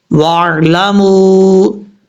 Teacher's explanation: میم کے بعد واو مدہ ہے، ایک الف کی مقدار لمبا کریں گے، لیکن واو کے اوپر مد بھی ہے، اس مد کو مد منفصل کہا جاتا ہے.